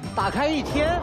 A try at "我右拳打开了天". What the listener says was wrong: 不 是 一 天 了 ， 天 ，OK， ▁我 又 拳 打 开 了 天 ，